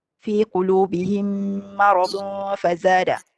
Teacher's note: Kalau qulubihim mim mati bertemu mim. Kat sini mim ni kuat dia punya dengungan sebab mim mati and then sabdu selepas tu. Bila sabdu mim tu pun dengung juga.